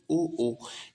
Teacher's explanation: ये हो जाएंगे कंठ ओष्ठ। मतलब ओ ओ ये कंठ आपके कंठ और होठ दोनों से बोले जा रहे हैं।